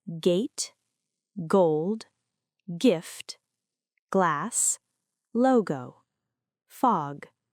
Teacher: This is the hard G sound. The back of the tongue touches the soft palate. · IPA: /g/